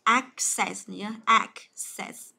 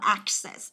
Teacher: từ này vừa là động từ vừa là danh từ luôn thì trọng âm của nó đều giữ âm thứ nhất